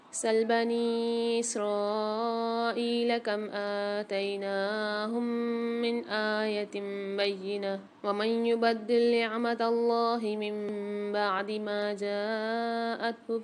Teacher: ما جاءتہ یہاں پر الف اور مد ہے، تو یہاں پر بھی 5 سے 6 الف مقدار کھینچ کے پڑھیں گے